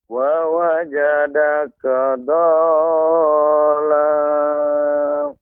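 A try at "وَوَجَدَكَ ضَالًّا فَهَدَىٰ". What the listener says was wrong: Masih kurang pada mad lazim musaqqal kilmi, ya, atau kalimi musaqqal. Dha wa wajadaka dhallan fahada. Dhallan fahada.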